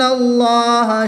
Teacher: اس میں جلالت اللہ عز و جل کے لام سے پہلے حرف پر زبر ہے تو اس لیے اس لام کو پر یعنی موٹا پڑھیں گے